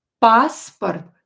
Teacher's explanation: O is not stressed, so pronounce it as A.